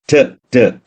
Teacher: So, total closure, sudden release. Here, your tongue is creating a closure against the teeth ridge